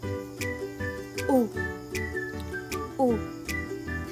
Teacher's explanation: Samantalang ang U ay isang pabilog na patinig na palikod.